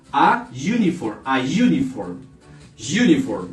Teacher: como este no es un sonido de vocal sino un sonido semiconsonante entonces en el indefinido le aplicaría a y sería a uniform